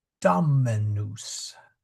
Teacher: Now you're gonna and as I said earlier in the class, you will hear the the dominus because that is the accented syllable and it's natural in English to make a accented syllable the vowel long. Um but it's actually a short O.